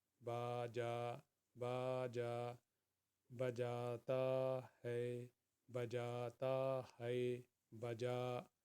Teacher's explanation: با کو ایک حرکت کے برابر، جیم کو دو حرکت کے برابر